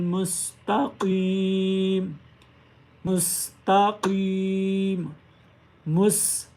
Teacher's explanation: सीन को अदा करते हुए सीटी की आवाज़ आनी चाहिए।